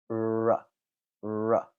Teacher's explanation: the alveola Ridge and then make a sound like uh R you can also tell that my lips are ever so slightly rounded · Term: R sound